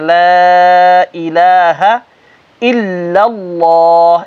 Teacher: الہ کے لام کو اتنا نہیں کھینچنا، اس کو ایک الف کی مد کے برابر کھینچنا